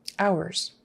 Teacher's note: that final s again is pronounced as a z